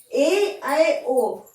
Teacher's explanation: half close, जिसमें मुंह थोड़ा ज्यादा खुला हो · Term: अर्ध समृत